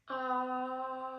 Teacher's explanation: So I didn't hear anything wet, hoarse, or breathy quality.